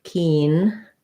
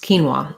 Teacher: quinoa, the OA, says a W sound and an ah sound. So first syllable stress.